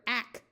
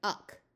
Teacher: longer English words that start with the letter A usually have the A schwa, where it takes on a muffled short U sound. So rather than being a clear ack sound, this is much more likely to be more like uck.